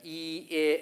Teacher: The e vowel forces you to widen your mouth. Your tongue is in the front. You're widening your mouth.